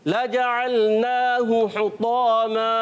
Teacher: और नून पर खड़ा ज़बर खड़ी हरकत को एक अलिफ यानी 2 हरकत की मिक़दार खींच कर अदा करेंगे। और हा पर पेश है, हा को बगैर खींचे अदा करेंगे। · क्योंकि हमने यहाँ वफ़ कर दिया। जब वफ़ कर लेंगे तो 2 ज़बर की तनवीन को अलिफ से बदल देते हैं।